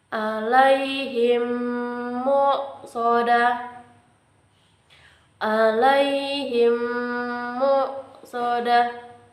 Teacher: Idgham mimi adalah hukum bacaan yang berlaku ketika mim mati bertemu dengan huruf mim. Dibaca menjadi satu seolah-olah menjadi mim bertasdid dengan disertai dengung. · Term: Idham mimi